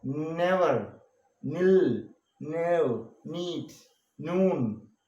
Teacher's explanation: The closure is between the front of the tongue and the roof of the mouth. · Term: nasal sound